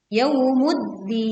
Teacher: Alif lam dileburkan ke dal sehingga kita langsung menekan pada huruf dal.